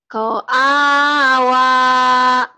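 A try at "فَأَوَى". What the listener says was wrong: Ko'awa. Ko'awa. Titiknya kan satu. Fa'a. Fa'a.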